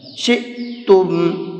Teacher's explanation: حمزہ ساکن کو جھٹکے کے ساتھ میں پڑھا جاتا ہے